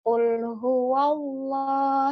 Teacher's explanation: ketika wa, A-nya sudah selesai lalu ke W.